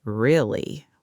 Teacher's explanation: With a flat falling tone sounds sarcastic or unimpressed.